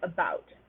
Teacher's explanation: often appears in syllables that are not stressed so like about stress is on the second syllable so the vowel in the first syllable becomes a schwa